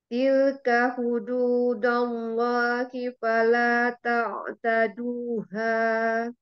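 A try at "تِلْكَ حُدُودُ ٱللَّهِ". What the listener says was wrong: Hududu, bukan hududah ya, hududu. Ka hududullah itu ya, hududu.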